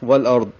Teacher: وقف کریں گے تو اظہار ہوگا ضاد پہ اور قلقلہ نہیں ہوگا، ضاد کو موٹا پڑھیں گے